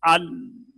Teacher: लाम में तवस्सुत है आवाज ना पूरी तरह बंद होगी ना जारी होगी